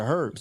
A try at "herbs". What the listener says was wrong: That H is silent, y'all. Herbs.